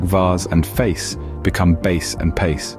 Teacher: Filipinos tend to pronounce their V's as B's and F's as P's